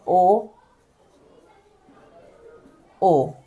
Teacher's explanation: पीछे की जीभ टच होती है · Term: पश्च स्वर